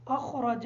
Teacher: اخرج کی جو را ہے اس را کو بھی پر پڑھیں گے